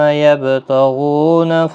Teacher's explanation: یبتغون، غو واو مدہ ہے، با ساکن پر قلقلہ ہوگا